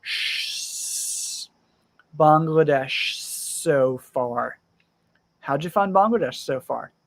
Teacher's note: the sh sound slides into the S sound